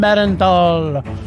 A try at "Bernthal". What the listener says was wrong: I think that's Bernthal. You're putting Too many syllables, man.